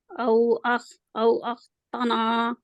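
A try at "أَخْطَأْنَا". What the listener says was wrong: او اختنا تا تا تا اب آپ نے تا کو موٹا کرے تا ابھی آپ جب آپ جلدی پڑھتے ہیں نا تو تا ہی پڑھتے ہیں تا نہیں پڑھتے تو اس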